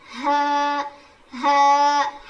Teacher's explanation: حلق کے نیچے والے حصے سے ادا ہوتا ہے